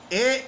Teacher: ए का उच्चारण कंठ तालू यानी ए कंठ और तालू से बोला जाएगा